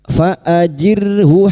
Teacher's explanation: ra sukun yang didahului kasroh dibaca tarkik